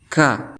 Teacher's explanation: lidah paling dalam langit-langit mulut yang berdaging dan bertulang kemudian Adapun cara pengucapannya seperti huruf k di dalam bahasa Indonesia hanya saja disertai dengan keluarnya nafas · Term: huruf Kaf, kaf